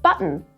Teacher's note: in some Australian words, the t sort of just disappears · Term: glottal t